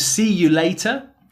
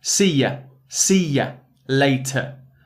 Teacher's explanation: It's that schwa sound, really common vowel sound at the end of the word.